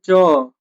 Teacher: जीभ का अगला भाग क्या होता है? तालू से टच होता है